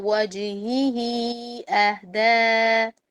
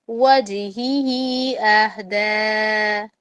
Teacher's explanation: وجہی اور اہدا پر چھوٹا مد ہے. اوکے، اس کا مطلب کیا ہے کہ اس کو 2 الف کے لمبائی کے برابر اس کو پڑھیں گے. اوکے، اس سے زیادہ اس کو نہیں پڑھنا.